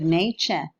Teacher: In the case of nature, we see a more complete case of coalescent assimilation. The alveolar plosive coalesced with the palatal semivowel and gave birth to a palato-alveolar affricate.